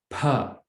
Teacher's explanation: It's pa, but with a little bit of air to it.